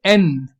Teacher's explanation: इसी तरीके से एन, tip of the tongue alveolar ridge को टच कर रहा है